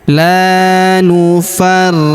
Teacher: Huruf ri kita tahan dan tekan karena terdapat tanda tasydid di atasnya.